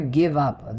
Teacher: The V and the up are linked together so neatly. It's not just two words placed side by side.